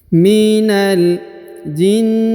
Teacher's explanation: Huruf na ditahan dan ditekan 2-3 harokat